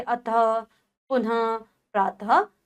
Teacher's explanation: संस्कृत से हिंदी में आए कुछ शब्दों के साथ विसर्ग का चिन्ह प्रयोग किया जाता है। इसका उच्चारण हल चिन्ह ह के समान होता है